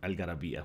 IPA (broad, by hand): algarabia